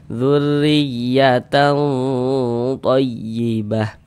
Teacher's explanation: Ikhfa itu dibaca samar dan berdengung ya. Dzurriyyatan, di bagian talnya itu suara itu kita tahan, kita panjangkan sejenak ya sepanjang 2 harokat.